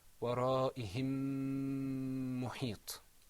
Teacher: we pronounce the meme sound, but we elongate it and we lengthen it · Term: idgham